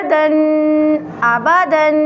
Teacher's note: تنوین کو گنہ کے ساتھ پڑھیں گے۔ گنہ ناک میں آواز چھپانے کو کہتے ہیں۔